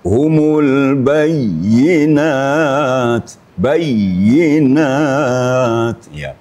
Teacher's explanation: bukan hanya sekedar mematikan tapi ada ya ganda di situ